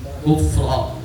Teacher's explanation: Ro fathah itu harus tebal. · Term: tafkhim